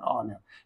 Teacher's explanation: And here H is silent, and we are pronouncing the word from O. O is giving a vowel sound, and that's why we think the word is beginning with a vowel sound, and we use an before that.